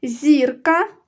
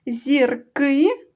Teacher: зірка наголошений перший склад зірки наголошений другий склад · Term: наголос